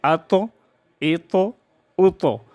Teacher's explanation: ط جب ساکن ہو تو اس میں ہم قلقلہ کریں گے